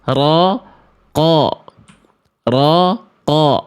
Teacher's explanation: Huruf qaf ketika berharokat fathah bunyi vokalnya A atau O. Sebenarnya bunyi huruf qaf itu ketika berharokat fathah tetap A, tapi bunyinya lebih gemuk